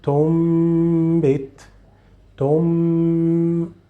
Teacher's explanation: And when you pronounce the sound of the letter meme, you will say always this ghunna, because the sound of the letter meme comes out from the nose. So it's coming from here.